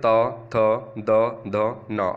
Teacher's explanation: जो दांत से बोले जाते हैं यानी कि दांत से टकराकर जीभ जो हमारी है वो दांतों से टकराकर वापस आती है